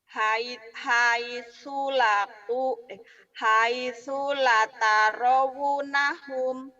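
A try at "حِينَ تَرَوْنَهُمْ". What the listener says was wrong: betul, tapi lanya panjang teh. Hai sula gitu teh. Hai sula tarawnahum. Hai sula tarawnahum.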